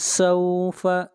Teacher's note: سین حروف صفیر میں سے ہے، سین کو پڑھتے وقت سیٹی کی آواز آئے گی